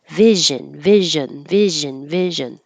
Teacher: both I and uh are used in unstressed syllables and that means their shorter duration